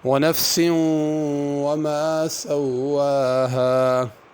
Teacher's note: ونفس وما سواها، نفس یہاں پہ غنہ کرنا ہے، سوا پہ کھڑی زبر ہے اور ہا کے بعد الف ہے، ان دونوں کو ذرا کھینچنا ہے، سواہا نہیں پڑھنا۔